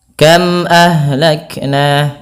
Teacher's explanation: apa dua bibir kita sehingga kita namakan dengan izhar syafawi yang dalam membacanya harus diperjelas suara mimnya dan tidak boleh ada penahanan